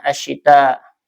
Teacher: Karena ada hamzah ya, ada mad ee sesudahnya hamzah maka dibaca dengan ee dua tiga atau lima harakat ya. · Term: mad jaiz muttasil